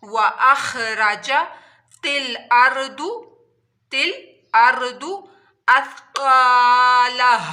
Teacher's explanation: वाऊ को दोनों होंठों की गोलाई से दोनों होंठों को गोल करके अदा करना है।